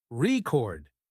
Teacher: if you stress the first syllable rord it's a noun but if you stress the second syllable record it's a verb